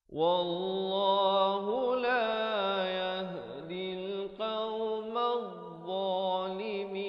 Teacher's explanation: Dhad ini, makhrajnya di ujung lidah dia macam huruf zal juga.